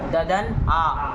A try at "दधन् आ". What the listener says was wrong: दधन आ, साफ बोलो दध दध क्या कर रहे हो, ध बोलो उसको, दधन नहीं वो तो द है, हाँ ध को ध बोलो, सबको थोड़ी न ध करना, ध थोड़ी न करना है क्या, दधन आ।